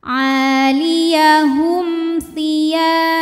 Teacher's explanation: Sebab ada mim sukun menghadapi huruf yang bukan mim bukan ba, yaitu tha. Cara bacanya mim dibaca dengan jelas, m tidak ditahan. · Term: idhar syafawi